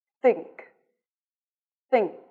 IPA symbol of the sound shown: θ